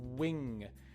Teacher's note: my lips are almost completely closed and that's what makes the strong w sound